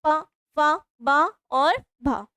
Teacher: हमारे जो ओष्ठ हैं वो दोनों टच होंगे